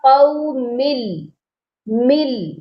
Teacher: یہاں پر نون کی آواز کو بالکل ختم کرنا ہے اور میم کو لام کے ساتھ سختی سے ملانا ہے، غنہ نہیں ہونا چاہیے۔ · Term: ادغام